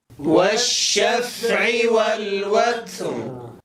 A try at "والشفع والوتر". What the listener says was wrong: حاول ألا تضم الشفتين، تنبهوا إلى هذا الخطأ، كثيرا ما نضم الشفتين عند الشين الساكنة، هذا ليس بصحيح. والشا، أعيدها معي. والشا بهذه الطريقة. والشفع والوتر.